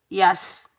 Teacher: या के ऊपर ज़बर है, या को हम सीन साकिन के साथ मिलाएंगे, सीन सख्ती और सीटी वाला हरूफ होता है, और बगैर खींचे पढ़ेंगे यस।